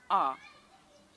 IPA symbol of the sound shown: ʌ